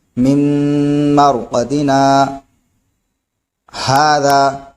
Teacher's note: تو ہم نے سانس وہی رکھی لیکن آواز کو روک دیا، اور آواز روک کر سانس لیے بغیر آگے پڑھا. یعنی من مرقدنا، یہاں پر سانس نہیں روکی، آواز روک دی. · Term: سکتہ